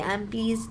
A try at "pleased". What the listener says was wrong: pleased. D वाला sound you're not telling. आप बोल ही नहीं रहे हो.